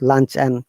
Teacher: if the word and is in between two words, we do not pronounce and, we pronounce simply n